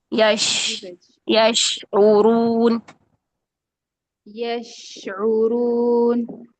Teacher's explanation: शीन का मखरज भी वही है जुबान का तालु जुबान का दरमियान और ऊपर का दरमियान का तालू लेकिन थोड़ा सा गैप रहेगा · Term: नरमी